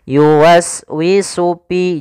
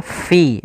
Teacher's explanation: Kemudian yuwaswisu fi, ini huruf fa, hati-hati jangan dibaca yuwaswisu pi, jangan, tapi dia fi, ada nafas yang kita keluarkan karena huruf fa yaitu ada salah satu sifatnya sifat hamas, fa, ada mengalirnya nafas kita fi.